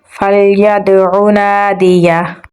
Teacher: دال کے ساتھ ملائیں گے اور دال پہ قلقلہ کریں گے، عین کو گلے کے درمیان والے حصے سے نکالیں گے · ہا کو گلے کے نچلے حصے سے نکالیں گے اور اس کی پیش کو ساکن کر دیں گے تو اس پہ جزم آ جائے گی تو پڑھا جائے گا